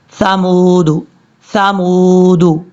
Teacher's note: زبان کا سرا اوپر والے جو 2 دانت ہیں ان کے اندرونی کنارے، یعنی نیچے والا جو اندرونی کنارہ ہے اس سے لگے گا تو ثا پڑھا جائے گا · جو ثا ہے اس کو سیٹی کے ساتھ نہیں پڑھنا، یہ بغیر سیٹی کے ساتھ پڑھا جاتا ہے نارمل طریقے سے۔